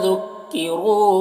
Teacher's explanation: را کو پر پڑھیں گے اور واو مدہ ہے، ایک الف کے برابر کھینچیں گے